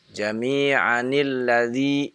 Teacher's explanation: maka digerakkan nunnya yang tadinya sukun dengan kasrah